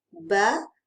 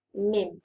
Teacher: Tetapi sifat huruf dia tak sama. Ba huruf-huruf qalqalah, lantunan. Mim bukan.